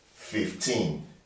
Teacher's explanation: the teen numbers, you always stress them on the second syllable